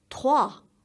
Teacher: Sounds coming from the back of your throat and say trois.